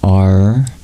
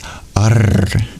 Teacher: the dot below the R and the S indicates that these are retroflex formed by curling your tongue backwards.